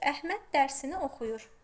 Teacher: Normalda vurğu Əhməd sözündə ikinci hecanın üzərinə düşür.